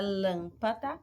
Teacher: Na palavra lâmpada, eu vou ter uma proparoxítona, porque a antepenúltima sílaba que é tônica